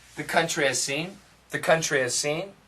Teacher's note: sometimes if we say it really fast there's no h